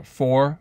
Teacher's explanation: as with a lot of southern accents the r is dropped at the end